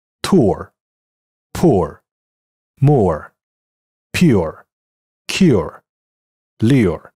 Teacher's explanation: 但是很多词典以及英语老师已经忽略了这一区别，所以用 KK 音标注音时也往往是用马蹄 U 而不是这个符号。在美式英语中，读音在英音中包含 OR 的词基本上都包含字母 R， 在美音中会 R 化，也就是 R colorization